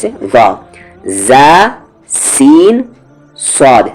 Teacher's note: सिटी वाली आवाज होगी इन तीनों लेटर में